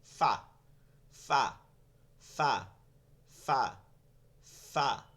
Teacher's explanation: নিচের ঠোঁটের পেট, সামনের উপরে 2 দাঁতের আগার সঙ্গে লাগায়।